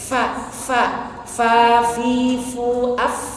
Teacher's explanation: Falahum. Jangan lupa fa-nya hamas ya, desahkan, keluarkan nafasnya.